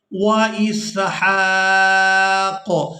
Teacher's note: ہا کو کھڑی زبر کی وجہ سے کھینچتے ہوئے قاف ساکن کے ساتھ ملائیں گے